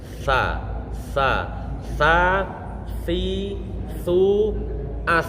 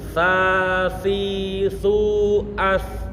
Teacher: punggungnya pucuk lidah ditempelkan pada pucuk gigi kelinci yang atas. Jadi bukan pucuknya.